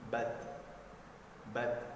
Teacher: pada saat huruf ta sukun, maka dibaca ada hembusan suara sedikit, ya, hembusan nafas seperti ini, bat, bat, sedikit saja, jangan berlebihan, bat.